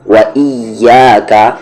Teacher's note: واو میں آپ کے لپس جو ہوں گے وہ راؤنڈ ہوں گے ، وَإِيَّاكَ، یعنی آپ کو واو بولتے وقت دانت اوپر والے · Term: لپس راؤنڈ